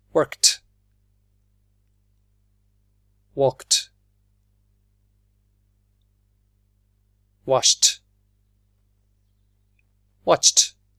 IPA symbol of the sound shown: t